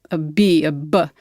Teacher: So a B, a B, that's the lips coming together to block the sound and then release the sound